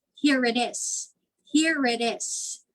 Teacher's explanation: it is would sound like here it is here it is like there is a letter r added between here and it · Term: intrusion